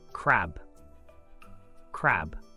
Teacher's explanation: a sound open your mouth wide and produce a clear a finish with the B sound close and release your lips with a burst of air